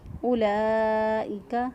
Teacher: لام کھڑی زبر لا، اوپر مد ہے، 2 سے 3 الف کے برابر لمبا کریں گے اس کو